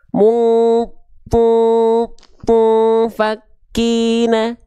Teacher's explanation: Dengungan kuat tuh maksudnya yang mendekati seperti eng.